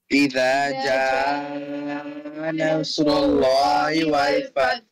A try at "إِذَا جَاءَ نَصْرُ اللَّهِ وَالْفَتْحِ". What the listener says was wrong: Can't hear the ha at the end, I'm not sure why. Follow Ali again properly.